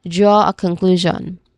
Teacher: Make sure to hold the draw sound clearly and stress the middle syllable of conclusion. Again draw a conclusion.